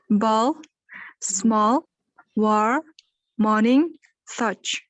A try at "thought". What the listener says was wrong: Thought. Т. В конце Т. Первый звук это T, H дает нам, мы это будем тоже проходить. T, H вместе дает нам звук Д, межзубная Д и Th. Поэтому первое начинаем Th, да, то есть кончик языка между верхними и нижними зубами.